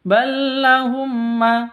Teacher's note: mim mati bertemu dengan mim. Cara bacanya dibaca dengung, masuk ke mim dibaca dengung. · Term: idgham mimi